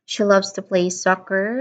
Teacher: When I emphasized the word soccer, I am emphasizing the key activity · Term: stress